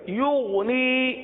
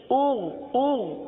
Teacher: تو غین میں قلقلہ نہیں ہوتا اور غین کو گاف کی طرح نہیں پڑھتے